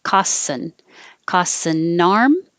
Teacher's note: now the n will connect to the a for arm